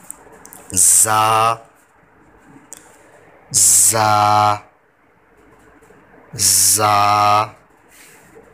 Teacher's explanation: इसमें सीटी निकालनी है। सीटी की आवाज़ इसमें पैदा होनी चाहिए वरना ये गलत हो जाएगा।